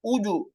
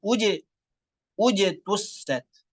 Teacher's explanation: yang dhammah ini biasanya suka berubah, suka kita monyongkan terus sehingga jimnya dalam kondisi monyong dan berubah menjadi bunyi tebal